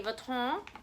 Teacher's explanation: the N is nasalized in France so that's why we say Vuitton